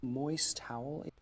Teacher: I'm merging the two T's here because you have the moist from moist and then towelettes. A lot of people actually fuse those two T sounds together when they're such popping consonants like that.